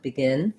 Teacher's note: this E is actually more of an I sound.